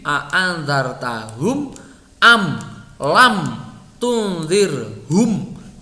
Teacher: Nah, walaupun pembacanya idhar, nun atau mim itu dibaca idhar, mim atau nun sukun itu walaupun dibaca idhar, dia tetap ada dengungnya, tidak hilang ya. Tetapi ya itu levelnya di bawah. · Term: idhar syafawi